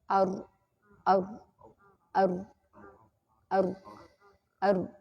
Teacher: Tapi karena dia punya sifat takrir, ketika terucap hurufnya itu bergetar lidahnya. Nah, dari getaran bergerak-gerak lidah itu, akhirnya ada aliran suara yang bocor keluar.